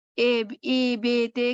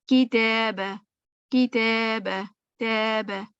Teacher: امالہ ہوتا ہے جیسے تھوڑے سے اے بے تے کر کے ساؤنڈ ہوتی ہے, یعنی لپس ہمارے تھوڑے اسمائلی کی طرف چلے جاتے ہیں. ٹھیک ہے, اسمائی یعنی لپس تا میں جیسے اتنے لپس کھلنے چاہیے, تا تا تا, اس کو میں تھوڑا سا زیادہ کھول لیا, ت اسمائلی کی طرف, فیس کی طرف لے گئی.